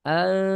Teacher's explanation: Di sini ikhfa. An pakai eng ya an.